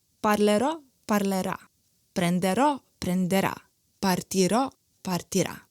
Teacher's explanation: The first and the third person singular of all verbs and all conjugations are accented.